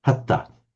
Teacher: But what happens is the nasal drops and it just becomes hatta.